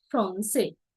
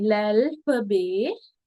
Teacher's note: We don't pronounce the T. T එක එහා පැත්තේ vowel එකක් නැතුව T තනියම ඉන්නවා නම් අපි ඒක pronounce කරන්නේ in French.